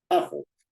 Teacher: La palabra ajo, que se divide en a y jo, tiene esas dos sílabas, ¿no?, tiene la fuerza de voz en a, porque nadie dice, para referirse a este condimento, ¿no?, nadie dice ajo, ¿no?, sino dice ajo.